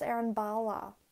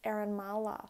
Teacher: when you make the b you bring your lips together just as you do with m but it's harsher